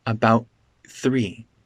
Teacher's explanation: There's a glottal stop first, and then I say th. About 3. It's not connected with the T and TH.